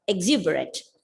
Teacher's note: The second syllable is stressed. Exuberant. Exuberant means full of energy.